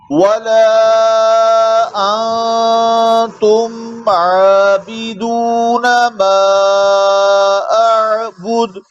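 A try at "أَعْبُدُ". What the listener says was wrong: बुध आखिर में कलकला भी होगा। बुध बुध बुध।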